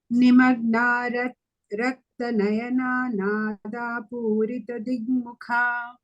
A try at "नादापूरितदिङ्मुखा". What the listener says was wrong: Dig, you are saying, no? Don't say g. Ding, ding, and that is half. Ding without a g sound. Ding mukha.